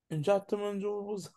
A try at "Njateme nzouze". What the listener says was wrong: Donc, ne fais pas cet élan d'occlusion. Njateme nzo. Ne fais pas ça. Njateme nzouze.